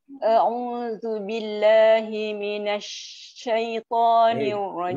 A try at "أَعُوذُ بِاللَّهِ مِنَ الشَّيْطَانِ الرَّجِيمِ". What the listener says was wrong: Kenapa berat minasyaitani? Minasya.